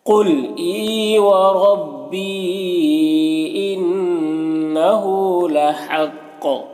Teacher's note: لحق یہاں پر قاف حروف مستعلیہ میں سے پر پڑھیں گے اور وقف کریں گے تو قلقلہ ہوگا، کیونکہ یہ تنوین سکون سے بدل جائے گا، تو اس طرح سے پڑھیں گے۔